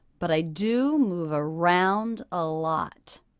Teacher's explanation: The stressed syllables in that sentence are do, round, and lot.